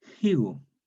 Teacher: Entonces la K intervocálica sonoriza una G, una sonora. Higo. Luego, a fin del siglo XVI, se pierde este fonema aspirado y queda solo el puro grafema, la pura letra, como dicen, la letra muerta, no tiene sonido, quedó higo.